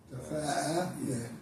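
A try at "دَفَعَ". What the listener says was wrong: Dafa'a, not dafa'a. You say dafa'a, that means you put a line, a elongation on the fa. Is this dafa'a? Dafa'a.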